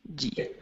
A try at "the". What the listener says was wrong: Okay, make sure to bring your tongue between your teeth. This is the TH sound. So instead of D, it's the.